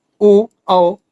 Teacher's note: कंठोष्ठ वर्ण में इसका उच्चारण स्थान कंठ और ओठ है। इसके अंतर्गत ओ औ स्वर आते हैं।